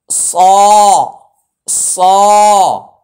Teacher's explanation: গোল করা যাবে না জিহ্বার সাহায্যে মোটা করতে হয় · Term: মোটা হরফ